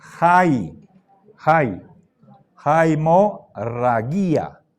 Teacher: diptongo tiene espíritu áspero Sí entonces no se pronuncia Ay sino siempre que hay espíritu áspero tenemos que pronunciar una J delante